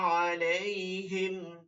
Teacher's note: হামি জের হিম হরকতে কোন টান দেয়া যায় না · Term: কোন টান নাই